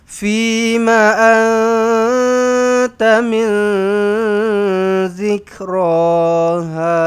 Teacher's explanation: nun kosong jumpa zal dua-dua ikhfa hakiki. Samar-samarkan, dengungkan.